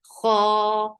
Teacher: Boo, circle your lips very nicely and make it 2 counts long. Kha, kha is heavy and 2 counts long because this is alif saghira.